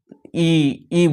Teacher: तालू से यानी जहां से आप च छ बोल रहे हैं वहीं से